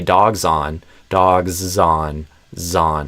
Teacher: If I say dogs on, zon, it sounds like a Z. So it kind of reveals the deeper sound that's going on.